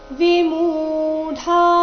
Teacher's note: ಮು ದೀರ್ಘ ಡ ಮಹಾಪ್ರಾಣ ದೀರ್ಘ